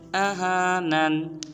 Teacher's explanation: اس حرف کو آہانن نہیں پڑھیں گے، حمزہ کو لمبا نہیں کریں گے